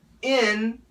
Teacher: that's in the front, in, very nasal, in. And we can have a schwa, un.